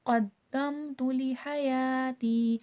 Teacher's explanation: ہا حرف حلقیہ، حلق کے درمیانی حصے سے ادا ہوگا